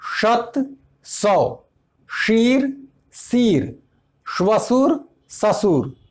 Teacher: तालव्य श दंत्य स में बदलता है।